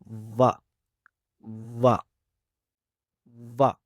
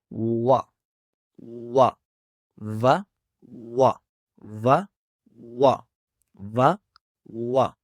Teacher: तो इस मखरेज के हवाले से आपने क्या करना है कि सिर्फ होठों को गोल करना है और इसकी आवाज को अदा करना है और इसकी आवाज जो है वह दुरुस्त अदा होगी। तो होठों को गोल करना यह इस हर्फ का मखरिज है